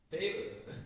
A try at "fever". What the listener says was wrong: Favor. No, then it sounds like a favor, like this, you know, favor? And a favor, you know, no? Favor. Favor. Favor is different from fever.